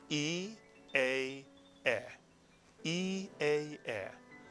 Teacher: the mouth tends to get larger, tends to open more as one says each of those three vowels